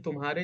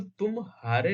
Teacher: किंतु तुम हारे में पूर्वत संक्रमण होता है। मा और ह के बीच में कुछ विराम या अवसान होता है। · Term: संगम